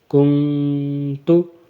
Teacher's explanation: واو کی آواز نہیں نکالنی، نون کی آواز ہی نکالنی ہے ، کاف، نون پیش، کن، تا پیش تو، کن تو، جب